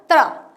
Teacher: त बोल के र फिर अ